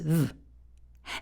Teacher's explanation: There should be a nice vibration on your bottom lip as your teeth are resting on your bottom lip to make that V sound.